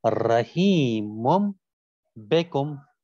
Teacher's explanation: پھر آخری بات کہتے ہیں کہ ایک اور ہے، اس کو بھی عرض کر دیں کہ یہاں کے اوپر نون تلفظ میں ہی پڑھا جاتا ہے، اور جیسے رحیم بکم کہ یہاں تنوین کا نون بھی تلفظ میں میم پڑھا جائے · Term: قلب